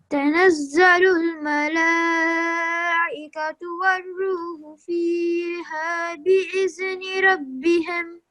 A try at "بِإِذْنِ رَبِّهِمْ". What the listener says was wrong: Okay, and here you make it sound like there's a kalkala letter. You say bi'idhni, but don't make this jumping sound over here because dhal is not one of the kalkala letters. So we don't we don't say it with a jumping sound, okay?